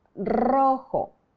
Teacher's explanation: The R is pronounced with a slight rolling of the tongue.